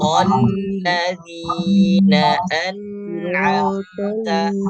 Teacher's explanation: an ditahan satu harokat, am ditahan satu harokat. An'amta jangan sampai terpantul huruf nun yang sukun.